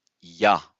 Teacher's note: Because of the place of articulation. When we say ya, we are touching with our tongue the hard palate. That's why it is palatal.